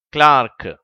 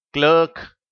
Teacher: இதை ஆங்கிலேயர்கள் கிளார்க் என்று உச்சரிக்கிறார்கள். அமெரிக்கர்கள் கிளர்க் என்று உச்சரிக்கிறார்கள்.